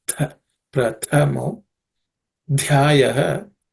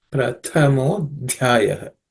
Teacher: So Tha is the second and the Dha is the fourth in the third class of consonants. Both have to be aspirated.